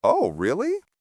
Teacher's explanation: With a flat tone, they might be skeptical, or even a bit sarcastic.